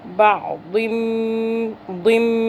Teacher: पिछला दौद और मीम दोनों आपस में मुदगम हो रहे हैं, मिक्स हो रहे हैं। और ये जो दौद है इसके नीचे जो तनवीन दो ज़ेर है ये एक ज़ेर में बदल जाएगा, यानी इदगाम की मुदगम होने की सूरत में ये एक ज़ेर हो जाएगा। · मीम मुशद्दद है, मीम पे गुन्ना होगा, दो मीम भी हैं इसके अंदर।